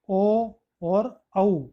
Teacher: ओ और औ का उच्चारण कंठ और ओष्ठ यानी होठ से होते हैं। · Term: कंठोष्टम